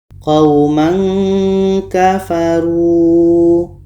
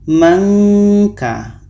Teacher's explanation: Tanwin bertemu ka itu ikhfa hakiki harus kita baca samar. Samarnya seperti menghasilkan bunyi nga.